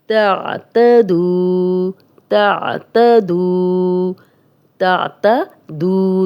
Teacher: جزم والی واو، پیچھے دال پہ پیش، دو حرکات لمبا کریں گے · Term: واو مدہ